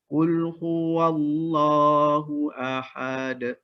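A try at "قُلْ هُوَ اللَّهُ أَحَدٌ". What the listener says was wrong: Tekan lagi. Ahad. Cuma abang kena perhatikan pada qalqalah kubra tu. Kena bezakan surah dengan kubra. Kalau kubra dia tekan lagi.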